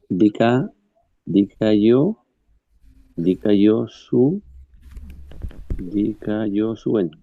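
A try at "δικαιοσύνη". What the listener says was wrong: pronunciado, es mejor pronunciarlo como I que como U.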